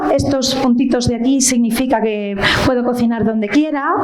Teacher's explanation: Eh, con unos silencios muy breves y unos inicios también muy paulatinos en la frase. esa pronunciación de las eses que nosotros llamamos ápico alveolar